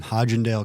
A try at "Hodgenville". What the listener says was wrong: Hodgenville, not Hodgendale, but Hodgenville. it's a ville, not a dale.